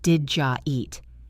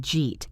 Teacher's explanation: They combine to make a J sound. Did you becomes did jaw and then we connect it to eat.